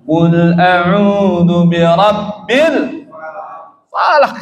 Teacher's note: Qalqalah kubra, tidak qalqalah sugra. Qalqalah pantulannya besar.